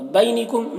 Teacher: یا لین ہے، اسے نرم آواز کے ساتھ جلد پڑھیں گے